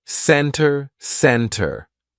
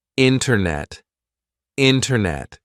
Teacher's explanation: we drop that t and we do not pronounce it Center Center no it's not center it's almost like we're spelling